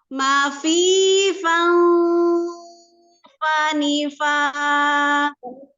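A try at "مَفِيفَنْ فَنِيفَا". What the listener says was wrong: jangan ke eng ya, jangan terus-terus ke eng ya. Kan langsung bentuk fa-nya. Fani. Umi bentuk eng-nya itu sudah ini bibirnya sudah mendekat. Fa.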